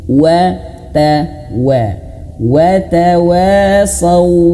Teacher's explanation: harus betul-betul huruf waw itu dimoncongkan.